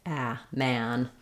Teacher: the front of my tongue is down behind my teeth and the back of my tongue is lifted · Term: the a vowel